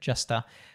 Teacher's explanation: turning that A into a schwa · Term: schwa sound